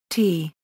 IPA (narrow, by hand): t̪